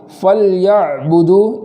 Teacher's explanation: اس کا جزم مکمل رہے، باقی رہے، ایسا نہ ہو کہ وہاں زبر ہو جائے ، جیسے فَلْيَعْبُدُوا، فَلْيَعْبُدُوا نہ ہو بلکہ فَلْيَعْبُدُوا اس طریقے سے